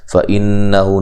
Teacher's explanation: فَإِنَّهُ نَزَّلَهُ عَلَىٰ قَلْبِكَ بِإِذْنِ اللَّهِ. فَإِنَّهُ، نون مشدد پہ غنہ ضروری ہے، حمزہ کو تحقیق سے پڑھنا ہے